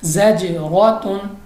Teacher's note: جیم چونکہ کلکلا ہے اس لیے ہم نے اس کو جنبش کی آواز سے پڑھا ہے، یعنی واپس نکلتی آواز کے پڑھا ہے